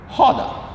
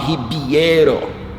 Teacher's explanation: So every time something starts with an R, just stand alone, it's H. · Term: R sounds like H